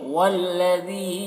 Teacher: ذال کو باریک پڑھیں گے اور مد ہے تو کھینچیں گے، والذی، اس مد کو 4-5 الف کے برابر بھی کھینچ کر پڑھ سکتے ہیں اور 1 الف کے برابر بھی۔